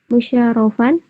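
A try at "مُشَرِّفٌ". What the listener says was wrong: musyarifun, musyarofun. nggak usah diberi harokat fathah tain. Yang fathah tain itu cuma masdar. Kalau isim fa'il isim maf'ul nggak usah pakai fathah tain. Di syarafa, yusyarifu, musyarafatan, musyarifun, musyarafun.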